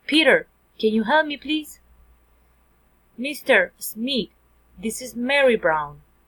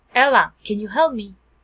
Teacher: Direct address, rising intonation.